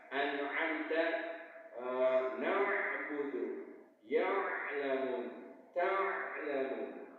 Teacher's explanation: Kalau ain dalam posisi sukun mati, baik di tengah kata ataupun di akhir kata, suaranya harus mengalir. Kalau tidak mengalir, itu huruf hamzah.